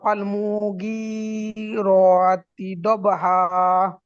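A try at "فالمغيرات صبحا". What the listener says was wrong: সুবহা, ওখানে সদ আছে, সুবহা।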